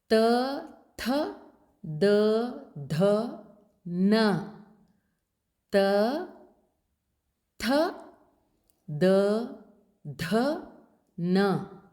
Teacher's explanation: sounds produced from the back of the Upper Front Teeth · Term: the dentals